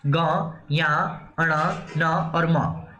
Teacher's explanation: नासिक, नाक और मुंह दोनों से हो रहा है। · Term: नासिकीय व्यंजन